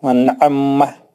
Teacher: عین کو سختی کے ساتھ دو بار پڑھیں گے